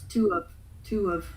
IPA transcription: tʊ wƏv